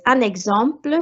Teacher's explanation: And an extra one here is un exemple, so you actually say the N because of the E, and des exemples, the S becomes a Z sound again because of the vowel.